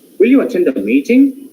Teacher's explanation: if you're using rising tone here on you, it continues till the end with rising.